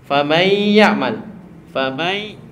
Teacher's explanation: huruf ya keluar dari lisan, huruf nun keluar dari hidung. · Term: idgham bi ghun